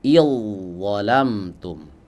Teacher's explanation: Kita tidak baca idzalamtum, zal dibaca kemudian dha-nya dibaca juga, tidak. Tapi huruf zalnya melebur masuk ke huruf dha. · Dan perlu kita ketahui dua huruf ini memiliki persamaan makhraj. Yani makhrajnya sama, keluar dari ujung lidah bertemu dengan ujung-ujung gigi seri bagian atas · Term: idgham mutajanisain